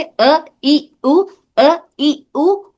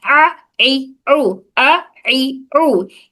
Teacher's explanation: हमजा हमारे हलक के निचले हिस्से से अ ई उ, अ ई उ। और ये आइन दरमियानी हिस्से से